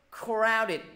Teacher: nhấn vô âm tiết thứ nhất